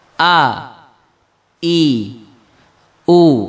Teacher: Ketika kita membaca huruf hamzah yang di fathah a, maka harus ditekan ke bawah karena makharijul hurufnya ada di jauh, di al-halqu, tenggorokan yang paling bawah. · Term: syiddah